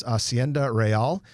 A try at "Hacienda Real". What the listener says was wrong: I think in that case you pronounce the H.